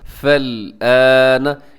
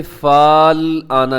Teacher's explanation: فا زبر لام، فل، حمزہ کھڑی زبر آ، فل نون زبر نا، فل آنا، اسے اپنے فال آنا نہیں پڑھنا بلکہ فا کو ڈائریکٹ اب لام کے ساتھ ملائے گا